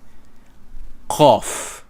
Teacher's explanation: It's somewhat at the back of the throat.